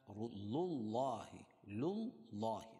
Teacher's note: اللہ کے نام سے پہلے زبر یا پیش ہو تو اللہ کا نام پر ہوتا ہے، یعنی موٹا پڑھا جائے گا